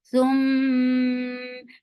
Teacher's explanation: As you will touch meme, your lips should be in a straight position. And give gunna, and this gunna is akmal, so keep the sound in your nose for a longer time. Thum, but fatha is very short.